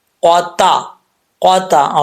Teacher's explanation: قاف جو ہے حروف مستعلیہ میں سے ہے، اس کو پر پڑھا جائے گا۔ قاف، قاف زبان کی جڑ اوپر والے تالو کے نرم حصے سے لگے تو قاف پڑھا جاتا ہے۔